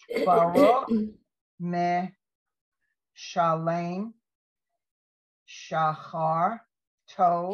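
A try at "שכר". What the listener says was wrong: Careful. Careful. Go back to that word. It's not a chin.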